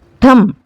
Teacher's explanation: ఠ అనేది ఒత్తి పలుకుతున్నాం కదా ఇక్కడ, కాబట్టి ఈ కంఠం అనేది మహాప్రాణాక్షరం